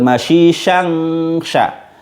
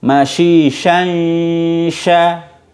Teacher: Ya, ini mirip-mirip kayak idgham, cuma kalau idgham itu masuk suara n-nya benar-benar lebur atau masuk ke huruf berikutnya, tapi ini enggak, maka disebutnya ikhfa, samar. Jadi huruf suara n-nya itu menjadi samar gara-gara posisi mulut kita sudah di posisi huruf berikutnya